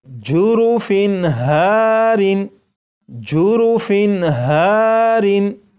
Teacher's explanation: تنوین کے نون ساکن کو ظاہر کر کے پڑھا گیا